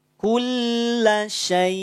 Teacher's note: Kalau hamzah sukun berarti suaranya terputus, terhenti, tidak dialirkan.